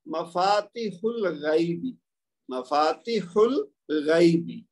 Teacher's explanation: हा को लाम के साथ मिला देंगे और हमजा हमजातुल वस्ल बनेगा और पढ़ने में नहीं आएगा